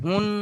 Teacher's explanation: নুন মুসাদ্দাদ গুন্না ওয়াজিব আগের অক্ষরের সাথে মিলিয়ে পড়ার সময় একালি পরিমাণ গুণনা করে পড়তে হবে